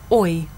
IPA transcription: ɔɪ